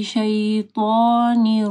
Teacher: طا کو موٹا پڑھنا ہے